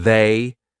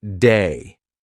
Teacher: lots of English Learners will pronounce it like a d so instead of saying they they'll say something like day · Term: voiced th